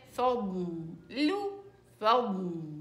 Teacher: اسحب الضاد الى الداخل، فضل وسط اللسان للداخل